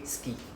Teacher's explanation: we don't need to pronounce the s u sound like we don't say the u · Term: voicing of vowels